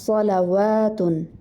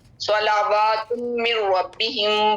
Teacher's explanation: صلواتم لام کے اوپر صرف ایک زبر ہے. لام کو لمبا نہیں کرنا. جو واو کے اوپر کھڑا مد ہے اس کو لمبا کرنا ہے